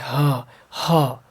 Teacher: ह कंठ से आता है सीधे, ह। ठीक है, ह कंठ से।